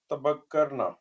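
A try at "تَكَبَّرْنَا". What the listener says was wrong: तकब्बरना ठीक है कब्बर और बक्कर में मसला है अभी ठीक है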